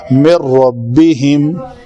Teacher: کامل means کہ نون مکمل طور پر را کے اندر چلی جائے گی. پڑھیں گے مِن رَبِّهِمْ. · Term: ادغام کامل